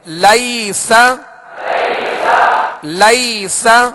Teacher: اسے نرمی کے ساتھ بغیر کھینچے بغیر جھٹکا دیے معروف پڑھیں گے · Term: یا لین